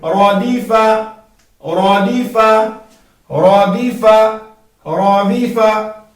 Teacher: را کو پور پڑھنا ہے، دال کو باریک پڑھنا ہے اور فا کو بھی باریک پڑھنا ہے